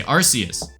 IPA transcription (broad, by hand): 'ɑrsiəs